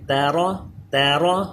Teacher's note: تا باریک را پر کریں